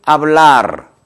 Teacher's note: R은 좀 떨리는 소리, 굴러가는 언어다 말씀드리고 있는데